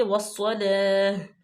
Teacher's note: یہ بھی لام تعریف صاد جو ہے حروف شمسی میں سے ہے تو الف لام کو ہم سائلنٹ کریں گے۔ والصلاة، لام پہ کھڑی زبر ہے، اس کو ہم لمبا کریں گے، ل، ہونٹوں کو چوڑا کر کے۔ صاد جو ہے وہ حروف مستعلیہ میں سے ہے اور اس کو موٹا بھی پڑھا جائے گا، ٹھیک ہے۔